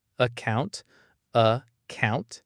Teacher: account starts with a schwa